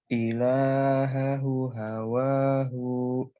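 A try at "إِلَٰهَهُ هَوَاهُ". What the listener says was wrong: Nah, ulangi lagi hu yang pertama dibaca panjang.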